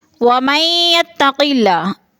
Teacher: وَمَن يَتَّقِ اللَّهَ، ادھر بھی ادغام ہو رہا ہے، میم کو یا کے ساتھ ملا کر ادغام کریں گے، درمیان والا نون ساکن نہیں پڑھا جائے گا